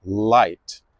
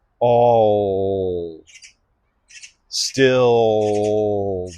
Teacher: Sometimes the L is a lighter L, like I'm doing at the beginning of a word, light. But sometimes it's a darker L, like I'm doing at the ends of words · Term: dark L